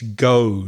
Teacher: But in the south, you kind of add a W sound, a W at the end, and it's go, not G.